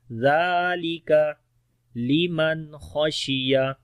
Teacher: نون ساکن کے بعد خا آ گیا، نون کی آواز ظاہر پڑھیں گے بغیر غننے کے، خا کو موٹا پڑھیں گے · ذال کو نرم پڑھیں گے، لمبا بھی کریں گے، کاف کو باریک پڑھیں گے